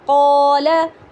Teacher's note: لام کے اوپر سمپل زبر ہے، ہم اس کو بالکل نہیں کھینچیں گے، جبکہ قوف کے ساتھ الف ہے تو ہم اس کو کھینچ کر پڑھیں گے، یعنی 2 کاؤنٹ کر کے پڑھیں گے، قولا، قول۔